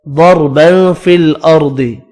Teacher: ضربا فی الارض، ضاد، را، یہ را اور یہ ضاد بھی پر پڑھنے ہیں، تنوین کا اخفا ہوگا.